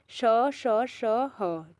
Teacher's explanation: मुख से हम बोल रहे हैं तो वायु है जो रगड़ खाकर कैसी निकल रही है? सीटी की ध्वनि के रूप में निकल रही है। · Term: ऊष्म व्यंजन